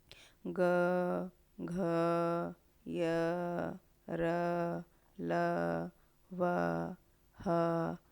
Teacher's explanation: जब ये व्यंजन बोलते समय स्वर तंत्रियों में कंपन हो तो सघोष व्यंजन कहलाते हैं